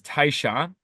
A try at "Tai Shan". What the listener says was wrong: Taisha, I guess you don't say the N.